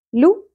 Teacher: لام کے اوپر پیش، ایک ہی حرکت ہے، زیادہ نہیں کھینچنا